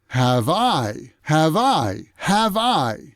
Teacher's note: the V sound from have moves over and connects with the I sound.